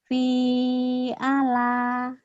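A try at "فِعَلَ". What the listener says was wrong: Yang panjang yang mana lagi? Hilangin.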